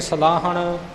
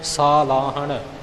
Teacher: ਸਾਲਾਹਣ ਸੇ ਦੇ ਕੰਨੇ ਦਾ ਖਿਆਲ ਰੱਖਣਾ ਆਮ ਤੌਰ ਤੇ ਅਸੀਂ ਸਲਾਹਣ ਸਿੱਧਾ ਹੀ ਬੋਲ ਜਾਂਦੇ ਹਾਂ